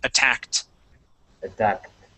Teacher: this ends with a K, so ed here sounds like a T